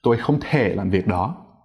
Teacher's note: if you're using a regular amount of stress you start medium high you go low but then you don't come back up again